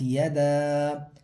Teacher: دال کے اوپر کھڑا زبر ہے تو اس کو کیا کریں گے ایک الف کے برابر کھینچ کے پڑھیں گے، کیونکہ کھڑا زبر جو ہے اس کا ایک الف کے برابر کھینچا جاتا ہے.